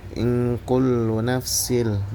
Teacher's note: tanwin bertemu huruf lam yaitu idgam bilagunna. Maka dia dimasukkan ke huruf lamnya.